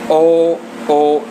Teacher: जब ओ बोल रहे हैं तो हमारे होठों का भी इसमें प्रयोग हो रहा है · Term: कंठोष्ठ